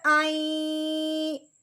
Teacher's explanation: اس میں نون کی غنے کی ہلکی سی آواز محسوس ہے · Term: غنہ